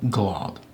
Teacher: It's a faint, it adds a slight breath of air almost between the G and the L